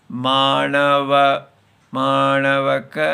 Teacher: तो आधा मात्रा उदात्ता और 2.5 मात्रा अनुदात्ता। तो जैसे मानव मानव का ऐसे, पहले पतला और फिर भारा। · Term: प्लुत